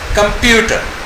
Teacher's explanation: so the second syllable is, इसमें stress है कंप्यूटर